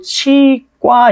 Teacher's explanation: 울림소리와 안 울림 예사소리가 만나서 뒷소리가 된소리가 되는 경우